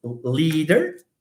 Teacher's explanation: you block one side of your mouth the air is blocked from one side and you you allow it to move from just the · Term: voiced lateral liquid